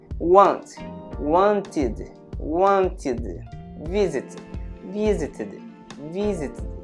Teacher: Esse ED vai ter um som de id. Id.